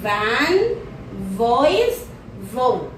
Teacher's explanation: Place of articulation is labiodental. Manner of articulation is fricative,